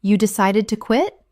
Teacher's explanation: Utilizing a rising intonation. This invites them to elaborate on their reasons.